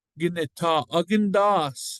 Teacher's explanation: our short O falls off the back